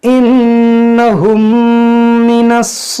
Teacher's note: देखिए नून मुसद्दफ है, इसमें गुन्ना करेंगे